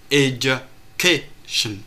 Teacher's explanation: từ education thì trọng âm rơi vào âm tiết thứ hai, tính từ bên phải sang. Khi tính về về trọng âm từ thì bao giờ người ta cũng phải tính từ bên phải sang, không tính từ bên trái sang.